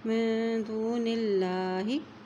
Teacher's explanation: اور دیکھیں اللہ کے نام سے پہلے زیر آ گئی ہے تو اللہ کا نام باریک پڑھا جائے گا